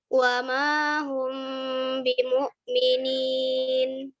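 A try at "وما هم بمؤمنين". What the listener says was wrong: Itu masih ya. Wa mahum, meme-nya masih jelas. itu meme-nya jelas banget ya.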